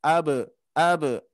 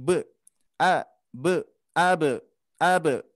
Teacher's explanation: di sini ada huruf ba qalqalah yang harus dipantulkan